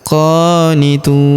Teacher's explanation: Huruf qo kita panjangkan dua harakat karena terdapat alif kecil di atasnya.